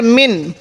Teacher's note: এখানে আমরা গুন্না করবো না স্পষ্ট করে পড়বো কারণ নুন সাকিনের পরে যখন ইজহারের হরফ গুলো আসবে তখন আমরা